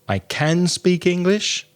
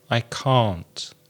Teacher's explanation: Now, sometimes can has the same sound as the vowel in hat or cat, can. And can't has a longer vowel sound. · sometimes can has the same sound as the vowel in hat or cat, can. And can't has a longer vowel sound. So try and focus more on the vowel sound of the word to realize if it's negative and positive.